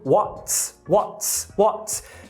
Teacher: O t da palavra what poderia ser palatalizado? Não, justamente por causa do s.